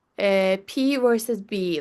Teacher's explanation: voicing P and B, P versus B, like voiceless versus voiced